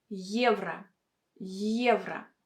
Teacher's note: we should pronounce it with a combination of sounds Y and E.